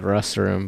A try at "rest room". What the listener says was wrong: It sounds like restroom every time you say it.